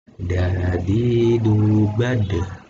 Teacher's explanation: keluar huruf ini tepat berasal dari ujung lidah dan bertepatan dengan pangkal dua gigi seri atas. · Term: dal